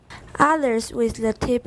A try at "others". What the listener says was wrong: What is that vowel? Is it ah? And remember, it's a Z sound at the end.